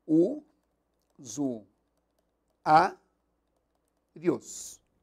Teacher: como a sílaba tônica é a penúltima Isto é a segunda de trás para frente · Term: paroxítona